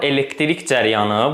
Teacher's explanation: Biri var elektrik cəryanı, vurğu bu zaman sona düşür.